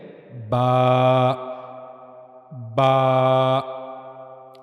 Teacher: यह बा का मखरज यानी जहां से बा अदा होता है होठों का अंदरूनी तर या गीला हिस्सा ठीक है जो होठों का अंदर की तरफ मुंह की तरफ वाला हिस्सा होता है वहां से बा अदा किया जाता है।